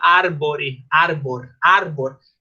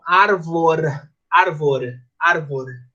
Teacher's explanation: Depois que tinha uma, ou entre duas vogais, ou depois de uma consoante sonora e uma vogal, eles não falavam B, eles falavam V